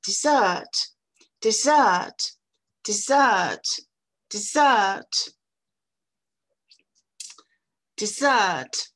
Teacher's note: Dans ce mot-là, la première syllabe est toute petite par rapport à la deuxième. Ça fait dessert, dessert, dessert, dessert, dessert, le dessert.